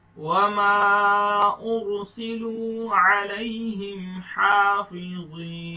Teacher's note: را کو موٹا پڑھنا ہے, میم کے اوپر مد ہے, چھوٹا مد, اس کو لمبا کریں گے